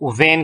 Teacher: So these are sounds formed with the upper teeth and the lower lip. ये ऐसे sounds है जो कि ऊपर के जो दांत हैं और लोअर लिप जो है इसकी मदद से ये प्रोड्यूस होते हैं। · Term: labiodentals